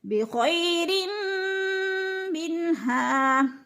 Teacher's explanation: بخیر منها، بن پہ اظہار ہو رہا ہے، نون ساکن کے بعد ہاں حروف ہلکی میں سے ہے تو ادھر اظہار ہے یعنی اخفا نہیں کریں گے، ظاہر کر کے لفظ کو پڑھیں گے